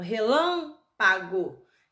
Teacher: relâmpago é a antepenúltima, então relâmpago, proparoxítona.